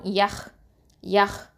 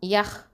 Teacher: இது அதனால் ஹல்கு, ஹாங்கிறது மேல் தொண்டை, அந்த தொண்டையிலேருந்து வரணும்